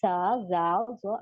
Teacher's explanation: जबान का सिरा या नोक सनाया उलिया के किनारों पर लगेगा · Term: र्फ लि सविया